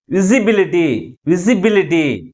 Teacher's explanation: primary stress is on the third syllable from the last. · ఈ విజి అనేది స్లోగాను, బి అనేది ఎక్కువ ఫోర్స్గాను పలుకుతున్నాం.